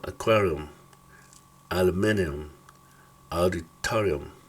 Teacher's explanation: la U se pronuncia, es como schwa, el sonido schwa, medio se pronuncia.